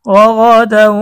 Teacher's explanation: غا দাল ওয়াও দুই জবর দাও রাগাদাউ এখানে ইদগামে বাগুন্না হয়েছে তানবিনের পরে ইদগামে বাগুন্নার হরফ ওয়াও এসেছে গুন্না সহ মিলিয়ে পড়তে হবে